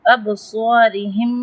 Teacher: ابصارہم میں با پر قلقلہ کریں گے کیونکہ با ساکن ہے، اور صاد جو ہے اس پہ تفخیم کریں گے.